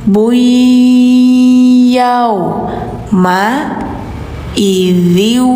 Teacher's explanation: Nah, ini sama seperti atas iqlab ya, yamba wama yambagi lahum qulu Nah, ini harusnya bun harusnya. Tapi karena ke depannya ada iya, maka suara n-nya dimasukin ke Y. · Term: Idgom